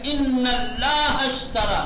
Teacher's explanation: یہاں پر حمزہ وصل بیچ میں ہے، لہذا نہیں پڑھیں گے